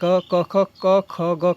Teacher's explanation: क, ख, ग का उच्चारण स्थान कहाँ से होता है, कंठ से होता है।